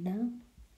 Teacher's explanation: Nazali ya ufizi ni na.